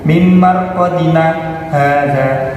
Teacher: termasuk bacaan saktah yaitu berhenti sejenak tanpa mengambil nafas